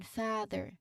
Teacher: Ah, this is the long open sound. It's sustained sound where your mouth is very wide open and your tongue is low and flat in the back.